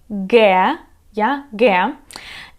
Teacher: G is used to represent the back-voiced plosive G, G, in Ukrainian and borrowed words.